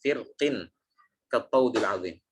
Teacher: Jadi terjadi perbedaan pendapat dalam membaca tebal atau tipisnya di kata firqin. Kenapa? Karena sebab kasrohnya huruf qaf.